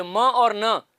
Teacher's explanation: तो प और ब दोनों नहीं है, क्योंकि ये दोनों बायलेबियल प्लोजिव्स हैं। न जो है, ये म और न, ये प्लोजिव्स नहीं होते, ये नेजल साउंड्स होते